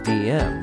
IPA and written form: dʒɪm (gym)